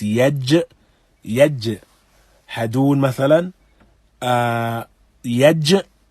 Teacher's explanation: And so yaj, when one recites yaj, hadun mathalan, yaj, the middle of the tongue raises and meets the upper palate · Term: jim